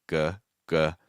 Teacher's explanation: If you make a G sound like g, that's the back of your tongue going high